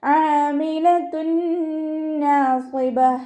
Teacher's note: തെൻവീനിനെ ലയിപ്പിച്ചിട്ട് മണിച്ചോതി കൊടുക്കുക കേട്ടോ.